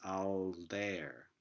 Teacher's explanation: Similarly, all there, the claim is that this liquid l is dental in this case